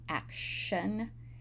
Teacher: In action, the T is pronounced as sh, action, and in act and the other words, it's pronounced as t.